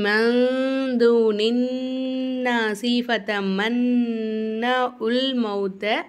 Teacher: இந்த நூனுக்கு மேலுள்ள சத்தையும், அதாவது சத்து செய்யப்பட்ட நூனையும் சத்து செய்யப்பட்ட மீமையும் மட்டும் நம்ம நல்லா அழுத்தி உச்சரிக்கணும்